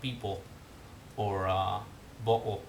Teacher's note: basically pronouncing the L as a relatively close back rounded vowel, kind of like the O in O chiusa in Italian, the cardinal O.